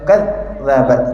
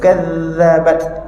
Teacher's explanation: huruf Zal tak boleh bunyi dengan suara putus